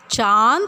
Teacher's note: अम्म में चंद्र बिंदू अनुनासिक अ मैं इसे बोलते हुए उन नाक और मुख दोनों से ध्वनि निकलती है